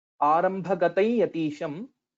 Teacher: the Anuswara will change into the Anunasika Yakara, Ya with the Chandrabindu